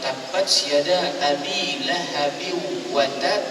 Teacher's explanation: ketara apabila kita baca contohnya kalau tabatada Abi lahabi Wat sebab kita tahan dan kita lepas disebabkan ada tanda syaddah di situ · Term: Qalqalah Akbar, qalqalah akbar